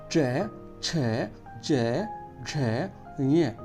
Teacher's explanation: ऊपर की तरफ आपकी जीभ टकराएगी तालु से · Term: तालव्य